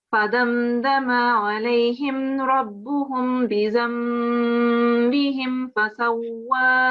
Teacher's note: the meme sound is followed by a ba, and you have to have the meme sound in your mouth before you continue onto the ba sound here, onto the ba letter, and give yourself at least 2 seconds on this sound.